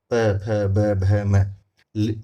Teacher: आप बिना दोनों होंठों को आपस में बिना टच हुए इन्हें ले ही नहीं सकते ओष्ठे व्यंजन को